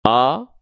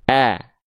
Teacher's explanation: Buka mulut, sedikit senyum. Jadi hamzahnya nggak dibaca begini, O, tapi dibaca A. Bukan O, tapi A. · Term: vokal a